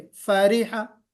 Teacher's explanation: तो आप देखिए कि ना फा को जबर खींचना है, फा के जबर को भी नहीं खींचना, और रा के जेर को भी नहीं खींचना